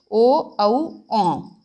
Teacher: कंठोष्ठ यानी कि कंठ और ओष्ठ से